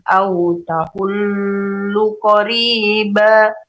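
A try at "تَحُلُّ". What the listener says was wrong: Yang lamnya tuh kayak 3 lam. Tahullu.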